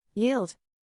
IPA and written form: jiːld (Yield)